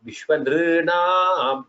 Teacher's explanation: Then nr here, that is the last word, has to be said as nr. That is a dirgha rikara.